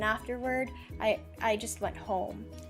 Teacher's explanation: there at home there was a drop of pitch